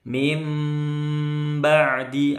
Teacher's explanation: mim ba'di itu bacanya mingkemnya nggak boleh putus ya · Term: iqlab